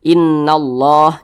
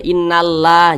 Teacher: memiliki tanda baca fathah nih baris satu ke atas seperti ini maka kalimat Allah dibaca tebal dibaca tafkhim jadi ini dibaca innallah jangan dibaca innalla jangan tapi dibaca innallah